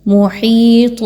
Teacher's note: یا مدہ 2 الف کے برابر اس کی ادائیگی رکھیں گے